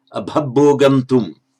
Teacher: Of course, the M becomes an N following the T.